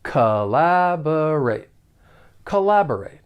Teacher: the verb has 4 syllables and the stress is on that second syllable. The first and third syllable have that unstressed schwa sound